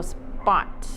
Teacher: your P sound almost sounds like a thick B sound